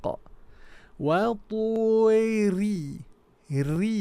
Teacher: we have a lighten ra tarqiq. Re, flatten the tongue, rattle a bit.